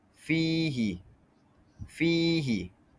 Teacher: Jadi yang kita lihat di sini fihi fihi ya itu selepas daripada fa yang berbaris bawah. Jadi cara baca yang tepat adalah kita perlu baca selama dua harakat sahaja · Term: mad asli